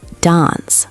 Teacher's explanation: In British English, specifically Southern British English, it's dance, long ah, like bath with a long ah.